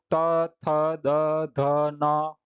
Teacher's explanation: इन वर्णों का उच्चारण करते समय जैसे त तो हमारी जीभ दांत से टकराती है। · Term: दंत्य व्यंजन